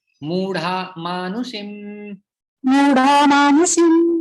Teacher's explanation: संधि बन जाती है, फिर विसर्ग का लोप हो जाता है